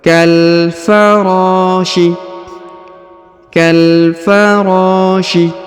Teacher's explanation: Kaf langsung masuk sambung ke huruf lam yang berharakat sukun Kal huruf RO dipanjangkan dua harakat karena di depannya terdapat Alif